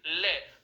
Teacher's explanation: जितनी देर तक ले लंबा उच्चारण करके देख लीजिए, आपको इस चीज का आभास होगा कि जीभ का अग्रभाग मसूड़ों के अग्रभाग से स्पर्श कर रखा है और हवा कहां से निकल के आ रही है, दोनों साइडों से बाहर निकल के आ रही है, किनारों से बाहर निकल के आ रही है, बगल से बाहर निकल के आ रही है। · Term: ले वर्ण